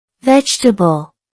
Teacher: That's 3 syllables. The stress is on the first syllable.